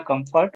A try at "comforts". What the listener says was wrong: Now two mistakes. One is comfort, that is comforts, s sound missing. One pen, two pens. One pen is on the table, two pens are on the table.